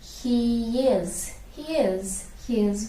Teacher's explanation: He ends with E sound. Is begins with E sound. So in between a y glide, y. He is.